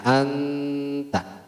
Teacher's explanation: anta nunnya masih kelihatan ya tidak samar tapi bedanya harus ditahan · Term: izhar